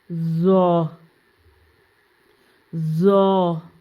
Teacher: زبان کی نوک جب اوپر سامنے کے دانت کے کنارے سے ملے تو یہ حرف ادا ہوتا ہے